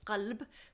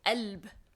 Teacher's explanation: in the Lebanese dialect, the letter qaf, that I mentioned earlier, where it means qalb, so they would just say alb. They wouldn't say the qa at all.